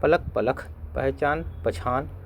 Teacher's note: कहीं कहीं अल्पप्राण ध्वनियों का महाप्राणीकरण भी होता है। उदाहरण के लिए पलक पलख, पहचान पछान आदि।